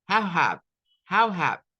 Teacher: Tienen que tratar de hacer el how y el have como en una sola frase. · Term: linkings